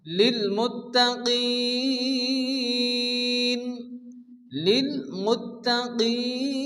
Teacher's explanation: নুন সাকিনের আগে এখানে হরফে মাদ্দার মাধ্যমে থামার জন্য আরিস ওয়াকফি 4 আলিফ পরিমাণ টেনে পড়তে হবে